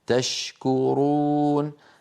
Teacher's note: الشين من وسط اللسان الكاف من اقصى اللسان مع الحنك اللحمي والعظمي ايضا ليس بينهما علاقه ولا ادغام نقول تشكرون ولا ندغم الشين